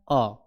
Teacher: जिस अ वर्ण को जब हम लोग बोलते हैं तो वह जीभ के जो है बीच वाले भाग से होता है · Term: मध्य स्वर